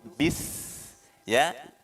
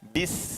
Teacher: Iqo ya, iqo ra bis ya, hati-hati ada sin mati di situ, bis ya. Sin ini memiliki sifat tafasi ya, berdesis juga hamas ya